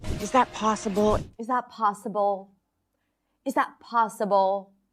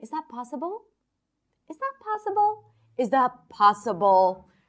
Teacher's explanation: She's dropping her pitch down.